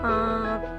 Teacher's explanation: नाक से भी निकल रहा है, गले से भी सपोर्ट मिल रहा है ना। देखो आँख, दोनों साउंड निकल रहे ना। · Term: अनुनासिक